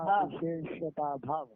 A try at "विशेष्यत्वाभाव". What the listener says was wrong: विशेष्यत्वा भाव बोल दो, ताकि अभाव बोल रहे हो समझ में आए, वरना भाव कह रहे हो अभाव कह रहे हो समझेंगे नहीं।